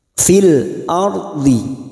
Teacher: Fil ardi, ra sukun yang sebelumnya ada harokat fathah, namanya ra tafkim atau ra yang dibaca tebal. Ra yang dibaca tebal, ciri-cirinya bibir kita seperti orang cemberut, bukan tersenyum.